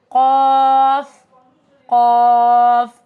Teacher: قاف زبان کی جڑ نرم تالو سے جب لگتی ہے تو ہمارے پاس قاف ادا ہوتا ہے. Back of the tongue with soft palate, it's also heavy letter، بھاری حرف ہے.